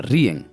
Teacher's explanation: y una vocal fuerte es el caso de la palabra ríen si la i fuera átona habría un diptongo pero al tener el golpe de voz se forma un hiato